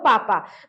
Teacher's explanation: जैसे जीभ से बोल, जैसे मान लो कि आप बोलो पापा, तो पापा बोलते हैं तो किसका किसका स्पर्श हो रहा है, दोनों ओष्ठ का स्पर्श हो रहा है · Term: स्पर्श व्यंजन